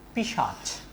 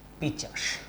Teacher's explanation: স এবং চ পরস্পরের মধ্যে কি করেছে, জায়গা বদল করে নিয়েছে, অর্থাৎ জায়গা তারা এলোমেলো করে নিয়েছে। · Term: ধ্বনি বিপর্যয়